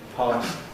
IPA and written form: pɑːs (pass)